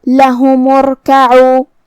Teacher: کلمت ارکعوا کی شروعات میں الف ہے تو یہ حمزۃ وصل ہے، ہمیں حمزہ کو ظاہر نہیں کرنا ہے. میم کے بعد سیدھا حرف الرا پڑھیں گے. پھر جو کہ حرف الرا ہے اور اس پہ جزم ہے تو یہاں را کا حکم ہے تفخیم کیونکہ یہاں میم پہ پیش ہے تو ہم را کو بھاری آواز میں پڑھیں گے. · کلمت لہم میں یہاں ہا پہ اور میم پہ پیش ہے، لہذا ہم یہ دونوں پیش کو ظاہر کریں گے اور اسے برابر سا ادا کریں گے.